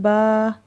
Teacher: با کھڑی زبر با، با کے اوپر کھڑی زبر ہے۔ اب اس کھڑی زبر کو 2 الف کے برابر لمبا کریں گے۔